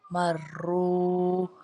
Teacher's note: را کے اوپر پیش آ جائے تو را موٹا پڑا جاتا ہے۔ شد والے لفظ کو ہمیشہ 2 دفعہ پڑھا جاتا ہے، پہلے ہم نے میم کو را کے ساتھ ملایا، پھر دوبارہ ہم نے را کو خود سے پڑھا ہے، کیونکہ را کے اوپر شد ہے۔